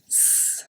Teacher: The tip of your tongue is going to touch the palate, not the teeth. So it's at the top of your palate, the front, but not the teeth. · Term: the S